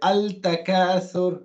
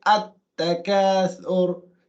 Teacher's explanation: So Lam Ta'rif, like we mentioned, Lam Ta'rif, when followed by these 14 letters, which are known as the sun letters, you don't read the Lam clearly. It's an idgham.